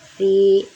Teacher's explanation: kasroh bertemu ya sukun panjang 2 harokat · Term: mad tabi'i